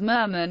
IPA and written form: ˈmɜrmɪn (Mermin)